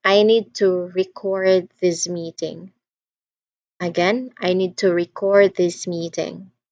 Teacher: That is the verb use of that particular word. Record. The stress is on the second syllable.